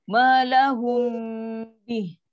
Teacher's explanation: bila mim mati jumpa ba, dia ada dengung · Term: Ifaq syafawi